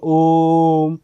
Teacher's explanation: इनके उच्चारण में 3 मात्राओं का समय लगता है, दीर्घ से अधिक समय लगता है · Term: प्लुप्त स्वर